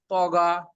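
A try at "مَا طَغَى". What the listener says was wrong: এই যে এই লাস্টের ভুলটা তো কিন্তু মারাত্মক, গা যেন না হয় ত গ।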